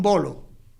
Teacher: Por ejemplo, si yo digo un bolo, la B, ahí bolo, se unen los dos labios, se impide la salida del aire y sale de golpe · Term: oclusivo